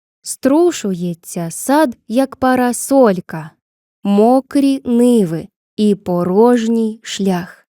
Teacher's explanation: Бачимо ритмічний малюнок вірша. Рівномірно чергуються наголошені та ненаголошені склади. Спробуємо згрупувати їх по два. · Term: хорей